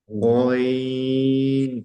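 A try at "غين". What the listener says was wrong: অনেকজনে কি, কারণ আগে থেকে যেহেতু অনেকজনে পড়ে থাকে, সেই জন্য এই অক্ষরটাকে অনেকজনে গাইন উচ্চারণ করেন। গাইন, গয়াকার গা পড়া যাবে না, শুধুমাত্র গ পড়তে হবে, যেমনটা এখানে লেখাই আছে, অইন।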